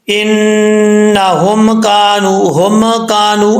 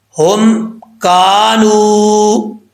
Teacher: یہاں پر میم ساکن ہے، میم پہ قلقلہ نہیں کرنا